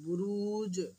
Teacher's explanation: আমরা জিম সাকিন হওয়ার কারণে কলকালা করবো